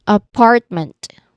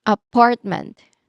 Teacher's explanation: It is stressed on the second syllable, part.